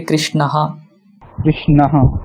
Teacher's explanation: Krishna plus visarga, right? So visarga would repeat the previous vowel sound So Krishna ends with akara, so it will be Krishnaha.